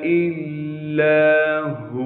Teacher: तशदीद होने की वजह से थोड़ा सा ठहराव रखना है और लाम के बाद अलिफ मद्दा होने की वजह से लाम को एक अलिफ के मिक़दार खींचेंगे